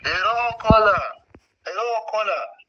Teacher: he was saying hero, not hello, because that comes from his Shona influence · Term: the R sound